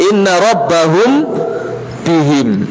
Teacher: apabila apa bertemunya mim sukun tersebut dengan ba cuma sekedar menyamarkan tidak dibaca izhar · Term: Ikhfa Syafawi